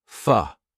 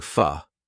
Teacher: Also, the word for, a lot of the time, we don't complete that sound. We just go fa. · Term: schwa